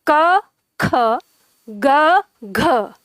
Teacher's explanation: तो अब आप इनका उच्चारण करके देखो, जैसे आप उच्चारण करते हो क ख, तो आप खुद ही देखेंगे क की तुलना में ख में ज्यादा हवा मुख से निकलती है, क ख ग घ, तो इधर ग की तुलना में घ में ज्यादा हवा निकलती है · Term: महाप्राण